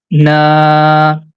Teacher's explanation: and we have to make it long because of letter alif whenever you see letter alif is coming after fatah we have to stretch the fatah sound for two count because this is a long vowel